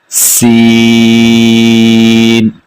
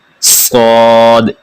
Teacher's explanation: سین تھوڑا سا باریک ہے، صاد بالکل موٹا پڑا جائے گا۔ सीन पढ़ते हुए सिटी की आवाज निकालनी है, सीन।